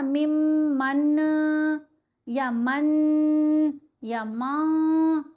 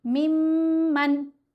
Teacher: نون کو جلدی بھی پڑھا، لمبا بھی نہیں کیا اور نون کو چھپایا بھی نہیں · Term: اظہار